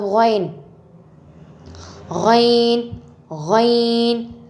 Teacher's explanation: غین غین غین ادنیٰ حلق سے ادا ہوتا ہے.